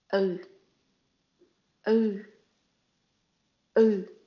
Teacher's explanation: It's a short, flat, unrounded sound that should feel noticeably different from the U sound because you have to stretch your mouth so your lips remain unrounded. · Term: the U with the hook